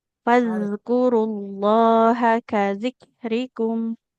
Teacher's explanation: jadi huruf dalal sukunnya harus mengalir suaranya.